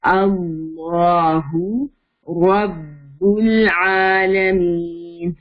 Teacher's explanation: لام الجلالہ سے پہلے زبر آ گیا ہے تو لام ہیوی